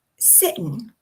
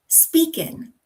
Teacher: So instead of ing, we get in. Sitting becomes sittin'.